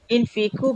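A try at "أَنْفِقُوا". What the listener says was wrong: Anfik, bukan infik tapi anfik.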